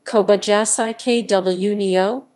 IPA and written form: kobajaɕi̥ kɯɲio (小林國雄)